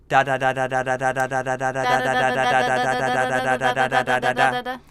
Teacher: you can just feel the very tip of your tongue on the gum ridge there for that nice, light touch, efficient T and D.